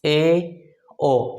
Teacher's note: अर्ध समृद्ध, अब इससे कम समय इसमें लगता है, जो समृद्ध स्वर हैं उनसे कम ऊंचाई पर जिह्वा को उठाना पड़ता है, ऐसे स्वर अर्ध समृद्ध कहलाते हैं।